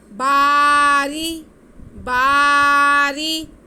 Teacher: रा के नीचे ज़ेर है, इसलिए रा बारीक पढ़ा जाएगा · बा पे ज़बर साथ में अलिफ, तो ये अलिफ मद्दा हो गया, इसको हम खींचेंगे